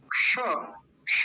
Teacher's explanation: क आधा और मूर्धन्य शकार, इन दोनों को मिलके बनता है क्ष। क का तो बहुत हल्का सा उच्चारण आएगा और मूर्धन्य शकार का ज्यादा आएगा